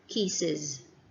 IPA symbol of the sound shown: iz